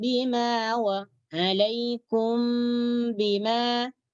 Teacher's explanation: jadi MB itu dibaca dengan sembunyi di dalam huruf ba kemudian dibaca dengan dengung · Jadi huruf mim ini disembunyikan di sisi huruf ba dengan dengung. Ya. Jadi mimnya itu dibaca dengan sembunyi di dalam huruf ba. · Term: Ikhfa Syafawi, ikhfa syafawi